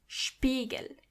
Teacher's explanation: When you see an S before a P, you have to automatically pronounce the S as sh, even if there is no C or H. The S is pronounced as sh as long as there is a P after it.